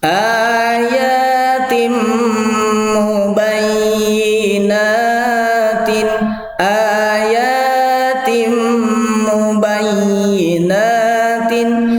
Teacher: Ini tanwin bertemu dengan mim, membacanya seperti melebur dengan mim langsung. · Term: idgham